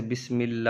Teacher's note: لفظ اللہ کے لام سے پہلے زیر ہو تو لام باریک ہوگا